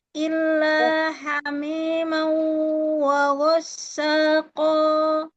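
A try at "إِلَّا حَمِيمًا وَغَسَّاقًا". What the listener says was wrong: Illa hamima, mi dia kasroh. Mi ya, mau langsung masuk ke waw. Ma dulu disempurnakan fathahnya. Illa hamimau wa ghassaqo. Sin wa ghassa. Ya, ujung lidah taruh aja di ujung gigi seri bagian bawah. Jadi dia mau mendekat ke ujung gigi seri bagian bawah untuk harfu sinnya. Illa hamimau wa ghassaqo.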